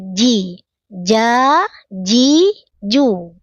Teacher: Napasnya tahan, tidak dibaca ca, ci, cu. Kalau masih ada cek-cek-cek-ceknya, berarti napasnya bocor, napasnya mengalir ya. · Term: jim